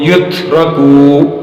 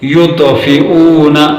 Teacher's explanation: اب تا کی آواز میں ہمس ہے، قلقلہ نہیں، جبکہ تو کی آواز میں قلقلہ کا قاعدہ ہے